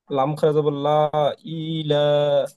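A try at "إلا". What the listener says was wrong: ই কি টান হবে? না, ই একটু টান হয়ে যাচ্ছে, ইলা।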